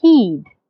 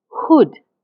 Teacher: the H in heed my lips are slightly spread but the H in Hood my lips are slightly rounded